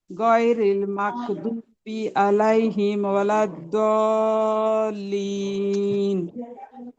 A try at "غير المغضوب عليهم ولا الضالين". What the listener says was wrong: তারপর আইন উচ্চারণ হয় না আপু, আইন উচ্চারণের প্রতি অনেক নজর দিতে হবে। প্রত্যেকটা আইন ভুল যাচ্ছে, আইন উচ্চারণ প্রত্যেকটা আইন ভুল যাচ্ছে।